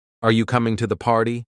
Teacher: when you're asking a yes or no question, your intonation should rise at the end